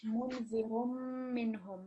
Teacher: the noon sound that comes from the tanveen, it's going to disappear, and you're just going to hear the mim.